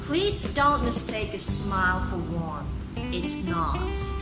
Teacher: it starts with unstressed syllable and ends with, or ended, stressed syllable. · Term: iambic line